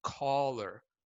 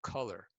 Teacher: My lips round into a circle. They're rounded. And the other thing is my jaw drops all the way down. I'm actually using the muscles here to pull my jaw down.